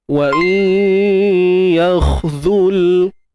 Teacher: huruf kha yang sukun, huruf kha yang mati tuan-tuan puan, kena tebalkan lah. Huruf kha ni kan, ingat tadi saya ada share pada tuan-puan, huruf isti'la tu, angkat pangkal lidah ya.